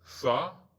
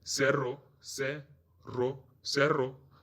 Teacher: S sound sounds different in Spain. In Spain they say tha, the TH as in thing, while in other countries it is a normal S sound.